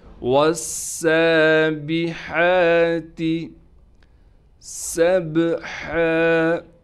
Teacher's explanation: سین کو با سے ملائیں گے، با پر قلقلہ یعنی آواز کو ہلائیں گے، ہا کو صاف کر کے گلے سے نکالیں گے۔